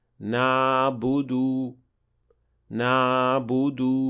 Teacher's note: دوسری غلطی حلق کے پچھلے حصے اور ایپیگلوٹس کے درمیان بہت بڑا راستہ چھوڑ دینا ہے، جس سے تھر تھراتی ہوئی عین پیدا ہوتی ہے